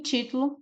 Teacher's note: em título a sílaba mais forte é o Ti · a sílaba mais forte é o ti. Todas são as sílabas antepenúltimas, né?